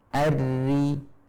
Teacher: ketika tipis, maka pangkal lidah akan turun, sehingga bagian tengah lidah tidak membentuk cekungan · Sedangkan ari tipis. Pangkal lidah diturunkan. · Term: ro yang tipis